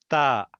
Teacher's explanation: ता सामने सामने की जबान का टिप आप ऊपर के दांतों को लगाए तो ता निकलेगा बारीक ता।